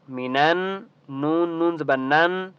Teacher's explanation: نون کے اوپر تشدید ہے تو آپ نے یہاں پر غنہ کرنا ہے